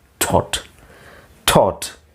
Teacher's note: ಟೋಟ್ ಅಲ್ಲ, ಟಾಟ್ ಅಲ್ಲ, ಅದರ ಮಧ್ಯದಲ್ಲಿರುವಂಥದ್ದು